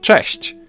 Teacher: Polish ch is a bit harsher than its English counterpart, but there's also a comparable softer sound, ch. You can hear both in the word cześć.